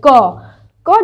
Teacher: आप आप जो बोल रहे हैं उस पर ध्यान दीजिए क क जब बोला जा रहा है तो क के साथ अ का प्रोनंसिएशन दिख रहा है क यानी कि क भी है और इसमें अ भी आ